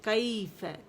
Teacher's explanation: پھر کیف، کیف میں کیا ہے دیکھیں، یا لین ہے نا، یا ساکن سے پہلے زبر آ رہی ہے تو اسے نرمی سے ادا کریں گے